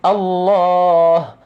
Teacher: Tak ada alif tapi perlu dibaca. Dengan minimum 2 harakat.